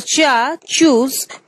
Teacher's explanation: Cha is a voiceless affricate consonant. It is pronounced only using the release of air